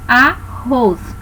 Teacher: oxítonas elas possuem a última sílaba tônica